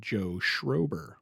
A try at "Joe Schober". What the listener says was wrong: Joe Schober. There's no R.